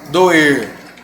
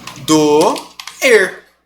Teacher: Eu não tenho semivogais aqui. Eu tenho o som do O e do E. Ó, doer. Eu tenho um encontro vocal. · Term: hiato